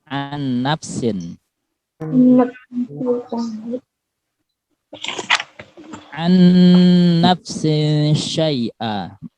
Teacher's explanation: Di situ nun bertemu dengan nun wajib dibaca dengung, dibaca gunnah.